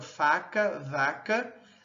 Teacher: nós temos lábio dental, o fã e o v